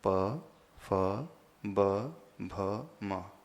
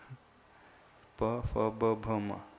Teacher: जिनमें दोनों होठों का स्पर्श होता है वो जल तत्व पैदा करते हैं। हाँ, पवर्ग में दोनों होठों का प्रयोग होता है